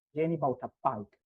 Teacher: the accent is on the last bit, bike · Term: stress